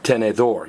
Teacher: You're stressing the last vowel, which is O.